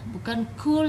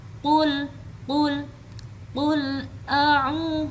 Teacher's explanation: Jadi diperhatikan lagi, ini bukan kul ya, bukan kul yang membacanya sampai mengeluarkan angin, tapi qul a'u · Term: makhraj qaf